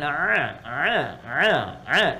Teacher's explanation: agak sedikit kita bawa ke tenggorokan kita Yang pertengahan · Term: Ain